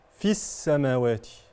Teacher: الياء الياء حذفت نطقا فقط وليس كتابه يعني تكتب ولا تنطق الياء حذفت نطقا لالتقاء الساكنين فحذف الساكن الاول وهو الياء لمجيء الساكن بعده وهو السين المشدده